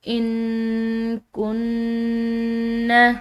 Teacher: نون ساکن ہے، اس کے بعد کاف ہے جو کہ حروف اقفا میں سے ہے، تو ہم نے اس کو مخفی پڑھنا ہے